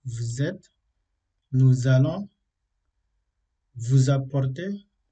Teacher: la liaison de S elle se prononce comme un Z. Ensuite, on fait la liaison avec une préposition plus un nom.